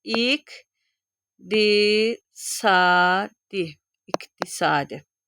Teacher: q-dan sonra samit var, kar samit var, t var olacaq. K samitinə çevriləcək. İq di sadi iqtisadi t da d-ya çevriləcək.